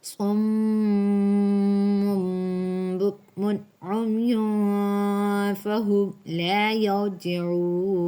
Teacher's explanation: 2 پیش کے بعد با اقلاب میں سے آ رہی ہے